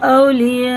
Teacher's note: یہ مد متصل ہے، 4 الف کے برابر کھینچیں گے